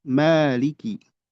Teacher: Adapun Imam Hafs itu dibaca dua harakat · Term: mad thabi'i